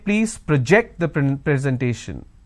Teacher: when i'm stressing on the second syllable it's a verb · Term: stress on the second syllable